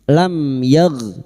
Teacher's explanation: Jangan dipantulkan ya bukan qalqalah.